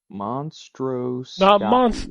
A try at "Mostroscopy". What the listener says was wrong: Not mon. It's just Mostroscopy. No, MOS.